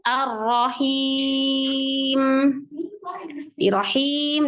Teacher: di situ ada huruf mad ketemu huruf yang disukun karena waqf i dibaca panjang bisa 2 4 6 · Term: Mad Arid sukun